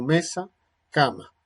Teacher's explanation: se representa por su forma bilabial nasal sonora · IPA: /m/